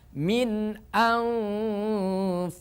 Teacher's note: nunnya dimasukkan ke huruf Fa karena nun mati bertemu dengan Fa hukumnya adalah ikhfa Hakiki ikhfa Hakiki dibaca ausat atau pertengahan tengah-tengah karena ikhfa itu dibagi